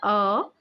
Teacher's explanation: जीभ के मध्य भाग का स्वर अ